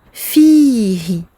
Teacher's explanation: Ici, c'est sur le fa qu'il y a une prolongation et non pas sur le ha.